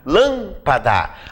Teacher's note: Lâmpada, a sílaba tônica é o lã. Sabemos, claro, que lã é a sílaba tônica porque ela tem acento.